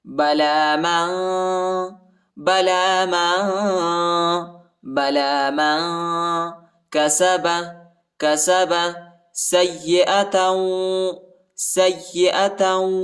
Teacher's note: سین کو یا کے ساتھ ملائیں گے، یا پر شد آیا ہے اور یا کو شدت کے ساتھ پڑھیں گے، تا کو واو کے ساتھ ملائیں گے اور غنہ بھی کریں گے۔